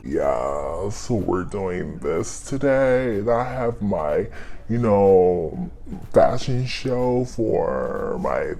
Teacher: it's very much monotone and just there's no inflection · everybody has that you know West Coast vocal fry